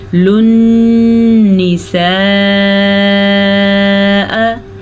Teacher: یہ بڑی مد ہے، اس کی مقدار تقریباً 5 حرکات عربیہ ہے۔ اگر آپ آسان الفاظ میں سمجھنا چاہیں تو اس کی مد 4 سے 5 سیکنڈ تک ہے۔